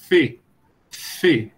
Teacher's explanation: desvozeada, fê, você toca o lábio no dente